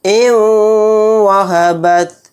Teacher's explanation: نون ساکن کے بعد واو آ گیا تو یہاں پر بھی ادغام واو یعنی ادغام مع غنہ کا قاعدہ ہوگا۔ واو پہ تھوڑی دیر آواز کو روک کر غنہ کریں گے